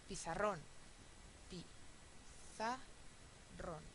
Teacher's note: es una palabra aguda Sí el estrés está en la última sílaba y acaba en N con lo cual es una excepción Entonces s leva Tile computadora